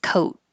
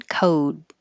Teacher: When the word ends with a voiceless sound, like a T, I'm sorry to be puffing the air, coat, then the vowel is going to be a little bit shorter duration. If the last sound is a voiced sound like D, D, then the vowel will be a tiny bit longer.